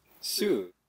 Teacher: It's pronounced in the 4th tone. You start mid-high, sort of, and go low.